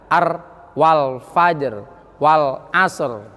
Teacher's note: Nah, menggetarnya lidah itu harus ada. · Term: ro takrir